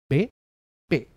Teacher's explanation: Y son oclusivas, que quiere decir que no dejan paso al aire